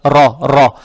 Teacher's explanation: фатха приобретает оттенок о, ро читается твердо